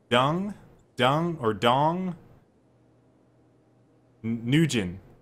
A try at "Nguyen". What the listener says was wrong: I don't think you pronounce the G. I think it's Nguyen or Dung.